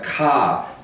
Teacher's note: in Australian English similar to British English some British English we don't pronounce the R sound in the middle or at the end of the word